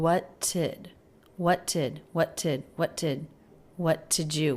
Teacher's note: I feel like I'm hearing what did what did what did what did what did you what did you >> what did what did what did you >> So I think she's dropping the D and just linking these two words with a T sound